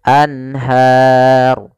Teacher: izhar halqi yaitu adanya nun sukun bertemu dengan huruf ha yaitu suara nunnya harus jelas tidak boleh ditahan